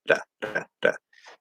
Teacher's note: I could do a single tap because that's like a flap D in English. It's very similar, da, da, da, right?